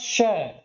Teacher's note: दांत के ऊपर वाली जगह मूर्धा वहां से इसका उच्चारण होता है